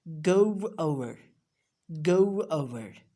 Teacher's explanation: we will put a little w sound and we'll glide the vowel sound and then we will pronounce go over